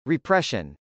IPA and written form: riprˈɛʃən (repression)